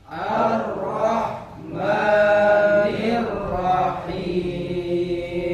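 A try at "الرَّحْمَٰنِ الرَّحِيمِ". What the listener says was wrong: Agak sedikit dipendekin maknya. Ar-Rahman. Haknya biar kerasa. Ar-Rahmanir Rahim. Yang di akhir yang disebut dengan mad arid sukun itu boleh 3 cara. Yang napasnya pendek cukup 2 saja.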